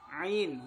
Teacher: huruf ain ini keluarnya sama dengan huruf ha dari tengah tenggorokan